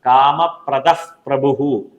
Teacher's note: വിസർഗ്ഗത്തിനു ശേഷം പ വരുകയാണെങ്കിൽ ഇപ എന്നുള്ളതായി മാറും